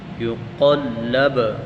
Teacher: حروف قلقلہ، قلقلہ کہتے ہیں ظاہر کرنے کو، یعنی ان حروف کو جب پڑھیں گے تو ظاہر کریں گے، جیسے خاص طور پر جب سکون سے ہوگا نا، جزم ہوگی، جیسے یقلب، با کے اوپر جزم ہے تو اس کو ہم اس پر قلقلہ کریں گے، اس کو ظاہر کر کے پڑھیں گے